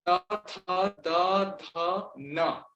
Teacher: त आप प्रोनाउंस करके देखिए, त, तो जिह्वा जो है वो दांतों के बीच में आ रही है ना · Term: दंत्य